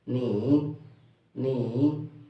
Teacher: Ni, its third tone.